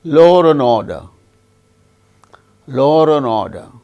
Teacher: So, in connected speech, in such cases, R intrudes. When a word ends with a vowel sound and next word begins also with a vowel sound. In such cases, R intrudes in connected speech. This kind of R is not, we do not find it in the spelling, but in speech R intrudes. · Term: Intrusive R